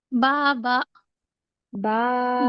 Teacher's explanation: और अलिफ मद्दा को दो हरकत खींचेंगे।